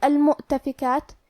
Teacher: حمزہ کو ظاہر کریں گے اور حمزہ کی ادائیگی حلق کے نیچے والے حصے سے ہے